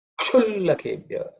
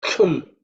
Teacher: the sh is tongue raised up, cerebral sh